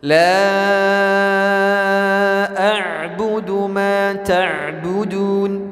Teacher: Mad jaiz munfasil di sini dipanjangkan sampai 5 harokat.